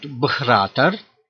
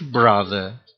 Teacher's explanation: in the first case we have voiced consonant with aspiration. In the second case, voiced consonant without aspiration